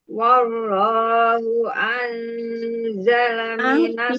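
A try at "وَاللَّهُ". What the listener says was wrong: Tipiskan wawunya Bunda. Wallahu yang tebal itu lapas Allahnya, tapi waw tetap tipis ya. Wallahu, jadi jangan wallahu.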